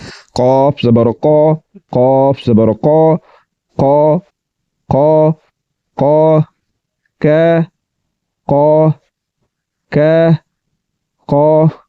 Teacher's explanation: زبان کی جڑ کو تالوں کی طرف بلند کرنے سے یہ حرف پر یعنی کہ موٹا کر کے پڑھا جائے گا